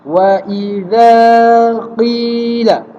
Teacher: Zal harus panjang sebabkan kehadiran alif mad asli. Qi kena panjang sebabkan kehadiran ya mad asli.